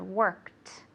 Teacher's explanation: good. Okay, so it has a hard T sound, worked. Okay, because the K is an unvoiced or non-voiced sound.